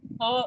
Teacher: it seems like your glottal muscles are coming together and then releasing the air. But there is a release of air for sure.